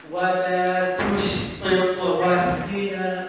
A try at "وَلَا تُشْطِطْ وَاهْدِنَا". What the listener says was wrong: بس في الهاء شوية كمان عشان الهاء همس.